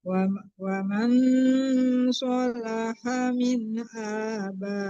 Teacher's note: Wa mau itu didengungkan ya disamarkan ke sod, itu hukumnya ikhfa hakiki.